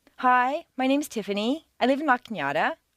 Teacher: Not every American uses the downward staircase. A certain segment of the population uses rising staircases, generally teenagers on their way to the shopping mall.